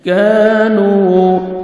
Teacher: کاف کو باریک پڑھ کے 1 سیکنڈ کھینچنا ہے واو مدہ واو ساکن زبر پیش ہے نون کو 1 سیکنڈ